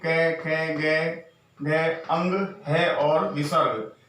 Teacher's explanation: इन सभी को हम कंठ के द्वारा बोलते हैं। इनका जो उच्चारण स्थान है वो हमारा कंठ है, जहां से इनका उच्चारण करने पर ये ध्वनि निकलती है।